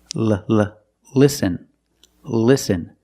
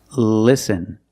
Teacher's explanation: the tongue is touching the roof of your mouth right behind the teeth listen and the tongue is flat and straight it's not raised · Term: light L